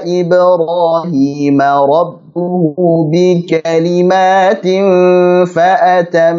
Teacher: Baik yang mim tasydid maupun nun tasydid kita panjangkan apa? Gunnahnya.